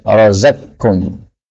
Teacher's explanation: Razaqakum, qaf ketemu kaf, ini boleh idgham, razaqkum.